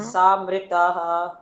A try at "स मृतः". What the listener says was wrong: स बोलो, सा नहीं बोलो। आ की मात्रा नहीं है ना, स। विसर्ग है वहां तो विसर्ग बोलोगे, जहाँ विसर्ग नहीं है विसर्ग नहीं।